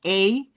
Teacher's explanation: ese es un sonido largo, es un diptongo y se forma de la e corta del español con la i corta del inglés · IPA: /eɪ/